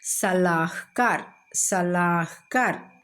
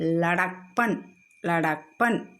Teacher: அதாவது 5 எழுத்து சொல்ல 2வது எழுத்து 3வது எழுத்து 5வது எழுத்து ஆ சவுண்டில் முடிஞ்சால் அதை நம்ம உயிர்மெய் எழுத்தாக அதாவது உயிர்மெய் எழுத்தாக அமைந்தால் 2வது 3வது இடத்துல ஏதாவது ஒரு எழுத்து தங்களது ஆ ஒலியை ஆ சவுண்டை ஒமிட் பண்ணிடும், தவிர்த்து ஒலிக்கும்